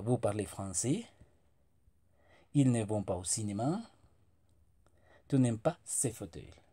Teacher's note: como si fuera una afirmación, pero cambiamos la entonación al final. Entonces la formación va a ser sujet, verbo, complemento, igual sujeto, verbo, complemento, como si fuera una afirmación, pero al final cambiamos nuestra pronunciación.